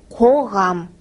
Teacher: Итак, звук к. Он произносится твердо.